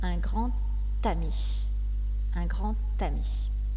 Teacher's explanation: La lettre D a également une prononciation spéciale quand elle fait la liaison. Elle se prononce T.